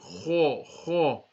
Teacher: Now can you see this is a musta'liya letter and you have to have a deep sound. Kha, kha. You don't have to open the whole of the mouth but just with a deeper sound.